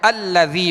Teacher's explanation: یہ حمزہ وصلی ہوتا ہے جو کلام کے درمیان میں آتا ہے، اور جب کلام کے درمیان میں آتا ہے وصل کی صورت میں گر جاتا ہے۔ جب وقف کیا جائے اور ساکن حرف سے ابتدا کرنی ہے تو پھر اس حمزہ وصلی کو اس ساکن حرف سے ملا کر پھر پڑھا جاتا ہے۔